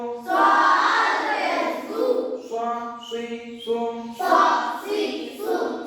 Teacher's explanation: সদ সামনের নিচের দাঁতের আগা হতে শীর্ষ মোটা ভাবে আদায় হবে